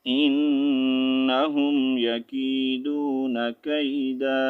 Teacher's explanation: Stop کی صورت میں یہاں پر ہم نے دال الف زبر دا الف مدہ پڑھنا ہے، ٹھیک ہے. انہم یکیدون کیدا، ٹھیک ہے.